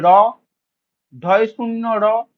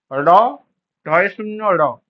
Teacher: জিহ্বার উল্টো পিঠের দ্বারা দন্তমূলে দ্রুত আঘাত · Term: তারণজাত ধ্বনি